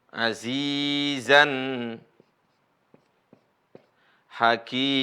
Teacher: Mengganti tanwin ya dengan bunyi alif. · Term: mad iwad